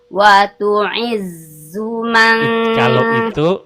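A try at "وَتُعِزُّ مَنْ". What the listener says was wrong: Kalau itu terlalu banyak anginnya, Bu. Atau wa tu'iz. Itu angin semua isinya. Dia nggak boleh. Huruf zai sifatnya jahar, ya kan? Tertahan hembusan anginnya, nggak boleh keluar. Wa tu'iz, tuh, bukan iz, bukan.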